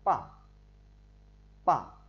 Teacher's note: Thanh 4 thì đọc pa pa, đọc từ cao xuống thấp, tức là nó đi từ bên cao ở bên trên trái xuống thấp sang bên phải. Cách đọc thanh 4 bằng cách dùng tay chém từ trên xuống và đọc giật giọng